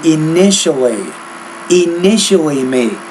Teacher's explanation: Shaking hands when you intimately meet. Now usually the TI in the middle of the word, it's more of an SH